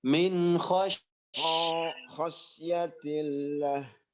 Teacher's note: Kho-nya tidak panjang, langsung masuk ke shin.